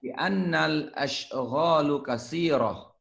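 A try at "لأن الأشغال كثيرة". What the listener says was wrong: Hasan.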